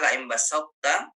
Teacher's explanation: Nakis itu contohnya adalah laim basata. Jadi ketika mau masuk ke ta, sifat to-nya masih ada.